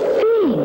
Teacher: you can hardly hear the th sound that starts the word thing